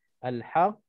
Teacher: ada sabdu nak kena gantungkan sikit, bagi tempoh sikit, jangan kita terus masuk dan kita sebut huruf yang ada sabdu tadi tanpa kita tekan ataupun tanpa kita gantung, supaya kita jelaskan huruf yang mati tadi yang ada pada huruf yang bersabdu.